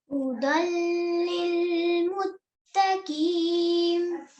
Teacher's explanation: meaning merging without gunna, without any nasal sound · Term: idgham kamil